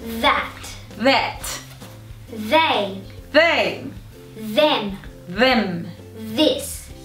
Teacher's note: Não se esqueça, a língua entre os dentes e um sopro. Esse TH que a gente chama o TH com som, ele tem uma vibração. · Tem uma vibration. Você ainda continua pondo a língua atrás dos dentes, só que ela tem um som, não tem tanto sopro, né?